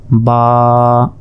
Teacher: এক আলিফ মানে এক সেকেন্ড করে আপনাদেরকে টান দিতে হবে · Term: এক আলিফ টান